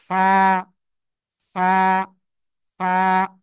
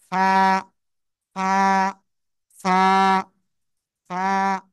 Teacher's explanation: নিচের ঠোঁটের পেট উপরের দুই দাঁতের আগার সাথে লাগাবো, লাগিয়ে হালকা বাতাস বের করে উচ্চারণ করতে হবে। এক আলিফ টানিয়া, এই যে ফা, ফা, ফা, বাতাস বের করে ফা, ফা, ফা, ফা।